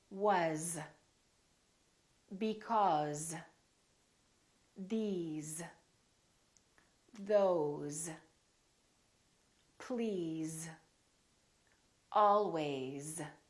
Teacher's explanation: spelled with an S and pronounced with the Z sound